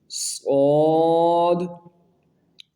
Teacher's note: صاد جو ہے یہ حروف مصقلیہ میں سے اس لیے اس کی سیٹی کی آواز جو ہے اس کو موٹا کرنا ہے